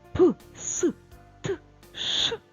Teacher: затоливши вушка і промовляючи ці звуки нічого не дзвенить Їх навіть не чутно п с т ш тихенькі звуки які ми називаємо глухі приголосні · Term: глухі приголосні звуки